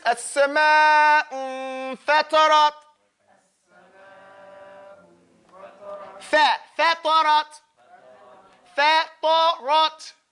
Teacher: So the ta and the ra have a itbaq, but the fa is maftuh. I mean, when it was open mouth.